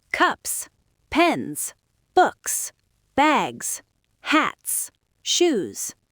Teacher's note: You can hear the rhythm bouncing back and forth between short and long, unvoiced and voiced.